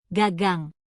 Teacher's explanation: Bagian belakang lidah kamu menekan langit-langit mulut bagian belakang dan lepas. Bunyi G akan keluar dengan mantap.